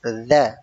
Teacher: Ujung lidah bertemu dengan ujung gigi seri atas. Ya, ujung lidah bertemu dengan ujung gigi seri atas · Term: huruf dza